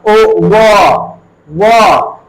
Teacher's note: वकारस्य दंतोष्ठम, इसमें कहता है जो व का दांत से दांत ओष्ठ का स्थान है, व का क्या है? दांत और ओष्ठ दोनों इसका स्थान है, ओ व। तो इसलिए इसको दंतोष्ठ्य वर्ण भी कहा जाता है।